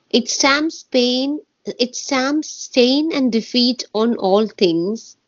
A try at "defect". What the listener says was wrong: you're reading too fast, love. You're reading too fast. You're making too many mistakes. It stamps stain and defect, not defeat.